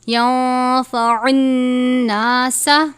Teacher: ينفع الناس نون مشدد پر غنہ کرتے ہیں